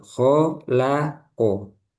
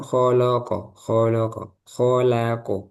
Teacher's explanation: Lamnya diapit oleh huruf yang tebal ya. Lam tipis, kho tebal, kof tebal.